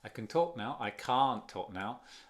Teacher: Ni se nota, ni se aprecia el T. Ni lo pronuncio.